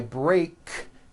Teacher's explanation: break ends with an unvoiced k sound CK there's no voicing on that K